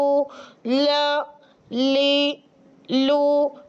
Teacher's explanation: जब तरफ लिसान यानी जबान का यह सिरा जो है आपका जब जवाही से लेकर सनाया तक के ऊपर मसूड़ों से लगता है तो हर्फ लाम अदा होता है चाहे वो इस राइट साइड से लगे चाहे लेफ्ट साइड से